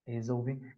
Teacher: Se ele colocar aqui resolvi é um ditongo, esse L tem um, seria um ditongo, esse L com som de U, do O para o U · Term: ditongo decrescente